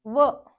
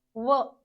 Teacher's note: स्थानी वरच आहे व चा उच्चार करताना दात आणि होठ व वरचे दात खालच्या होठाला लागतात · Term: दंतोष्ठ